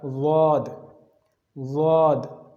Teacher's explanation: زبان کی سائیڈ آپ اوپر والے داڑوں کے ساتھ لگائیں گے تو وہاں سے پڑھا جائے گا ضاد